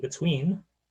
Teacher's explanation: speakers of New York City English (and those in contact with them) tend to produce /t/, /d/, and /s/ before /w/ as palatoalveolar sibilants